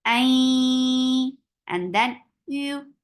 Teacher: I, Hamza is very sharp for fatha, open your jaws, and this is idgham with gunna. So keep the sound in your nose for a longer time.